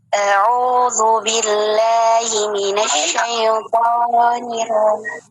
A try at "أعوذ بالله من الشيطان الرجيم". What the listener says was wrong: Ketika A coba dibuka, agak dibuka. Jadi yang karena terlintas dengarnya auzubillah, tapi ulangi lagi ya.